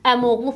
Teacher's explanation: Bunu əmoğlu formasında tələffüz etmiş olacağıq. İni salacağıq. Heç bir uzanma olmayacaq. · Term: səs düşümü